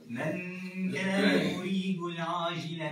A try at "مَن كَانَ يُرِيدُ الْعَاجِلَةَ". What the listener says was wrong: لا مش العاء. مش